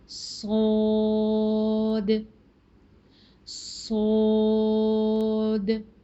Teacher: मद के साथ पढ़ रहे हैं लंबा करके, सोद द। ये जो लास्ट में दाल की आवाज़ है इसको आपने बाउंसी साउंड देनी है